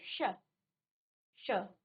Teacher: और साथ में हमने दोनों और दो अन्य सौ हैं उनके बारे में। तो इसका उच्चारण करते समय आपकी जीभ आपके मुख के अंदर मूर्धा को स्पर्श करेगी